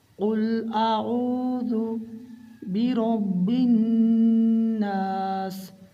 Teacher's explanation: نون میں غنہ ہوگا اور غنہ کی مقدار ایک الف کے برابر ہے